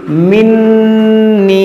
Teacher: نون مشدد ہے اس میں غنہ کریں گے اور اس میں یا مدہ ہے تو کھینچیں گے